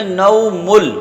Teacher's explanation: تو لام آ گیا تو اس تنوین کو لام میں ملائیں گے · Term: ادغام تام